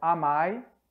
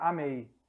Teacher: O som ai, aqui é um ditongo que se mantém, mas muda a vogal.